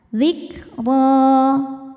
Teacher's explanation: Huruf ra dibunyikan secara tafkhim karena harokatnya di atas yaitu fathah tanwin. Cara bacanya ditebalkan.